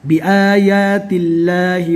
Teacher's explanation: یہاں پر اللہ کا نام باریک ہوگا، اللہ کے نام سے پہلے زیر ہے